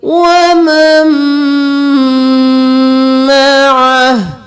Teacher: یہاں پر ہم نون کو چھوڑ کر میم کو میم کے ساتھ ملائیں گے اور میم پر گنہ بھی کریں گے ، وَمَن مَعَهُ، یہاں پر وقف ہو جائے گا تو ہاں